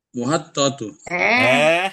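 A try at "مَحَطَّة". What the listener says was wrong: Tadi sudah disepakati tidak ada mu. Tidak ada mu. Iya, mahattoh gitu ya.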